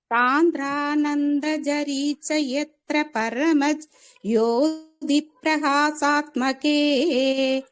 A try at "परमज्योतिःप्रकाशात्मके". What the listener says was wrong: பரமஜோதிங்கிறது சேர்த்து சொல்லணும். அது பரமஜோதி பிரிக்க கூடாது. அது பரமஜோதி பிரகாஷாத்மகே